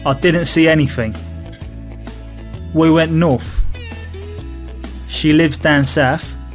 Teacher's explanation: The unvoiced th sound becomes a f sound.